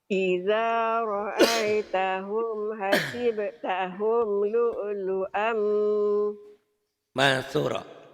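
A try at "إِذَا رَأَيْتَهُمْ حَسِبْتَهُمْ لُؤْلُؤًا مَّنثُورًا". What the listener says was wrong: Ini sa, bukan sin. Mansu, ujung lidah. Cadal, mansura. Ulang lagi.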